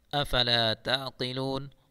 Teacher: قاف کو پر پڑھیں گے